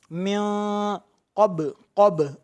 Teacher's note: ناک میں آواز لے جا کر ایک الف کے برابر گھننا کرنا ہے